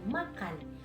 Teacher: Contohnya saat kita mengucapkan kata makan, huruf A terdengar jelas karena dibentuk oleh lidah yang berada di tengah rongga mulut dan mulut yang terbuka lebar. Bunyi N juga terdengar dari ujung lidah yang menyentuh bagian atas mulut dekat gigi depan.